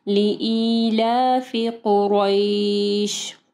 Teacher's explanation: قاف کو ہیوی پڑھنا ہے، ٹھیک ہے، را کے اوپر جو ہے زبر ہے اور یا ساکن ہے، ٹھیک ہے، یہاں پہ مدلین آ رہی ہے، یا اور واو ساکن جو ہے یہ دونوں حروف جو ہے مدلین ہے۔